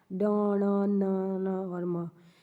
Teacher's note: ये ध्वनि हमेशा नाक से निकलती है, इसको अनुनासिक व्यंजन बोलते हैं।